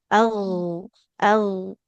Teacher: pengucapan huruf gin sukunnya dia harus mengalir suaranya